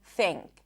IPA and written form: thiŋk (think)